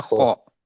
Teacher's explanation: خا نہیں کہنا، خو کہنا ہے نا، خا کہیں گے تو وہ پتلا ہو جائے گا، اس کو کہنا ہے خو۔